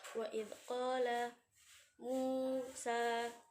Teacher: wawu sukun bertemu dengan dhamma maka dibaca panjang 2 harokat, termasuk bacaan mad tabi'i juga.